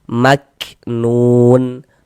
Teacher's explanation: Maknun, nun dibaca panjang. Ini namanya adalah mad arid li sukun. Namun pada awalnya dia namanya adalah mad tabi'i.